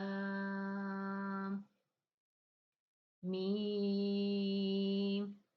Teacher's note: दोनों होठों के खुश्क हिस्से से मीम अदा होना देखिए बाहर वाला मैंने आपको बताया खुश्क हिस्सा और अंदर वाला